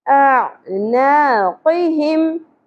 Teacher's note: आइन वस्ते हलक से, मद्दे असली, ना एक अलिफ के बराबर खींचना है।